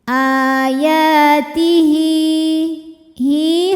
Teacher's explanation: h damirnya ini panjang dua harakat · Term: Mad Silah qasirah